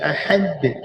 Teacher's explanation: kuatkan hujung lidah menekan belakang gigi atas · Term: dal